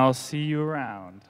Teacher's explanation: the music or the intonation Falls at the end of the word round